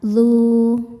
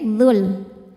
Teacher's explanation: Saat diwasalkan mad-nya gugur, dzal-nya dibaca pendek dzul. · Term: takhallus bil hadzfi